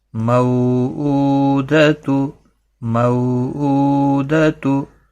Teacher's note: حرکت والے حرف کو کھینچنا نہیں، یعنی زبر، زیر اور پیش جس کے اوپر ہوتی ہے اس کو کھینچتے نہیں. مو واو لین تھوڑا نرمی کے ساتھ آدھے الف کے برابر اس کو کھینچنا ہے